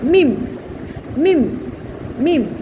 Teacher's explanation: অর্থাৎ জিব্বা ঠোঁটের উপরিভাগ না, নিচের ভিজা, এখান থেকে ভিজা থাকে আমাদের জিব্বাটা, সেখান থেকে তোমরা উচ্চারণ করবে, দুই টুটের ভিজা অংশ থেকে মিম উচ্চারিত হবে